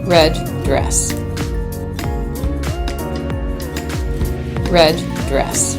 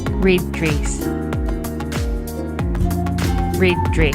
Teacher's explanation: Most often the New Zealand dress vowel sounds more like the kit vowel in other varieties of English.